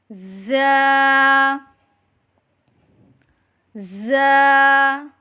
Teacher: जुबान की नोक और दांतों के अंदरूनी किनारे से अदा करें · زبان کی نوک اور دانتوں کے اندرونی کنارے سے ادا کریں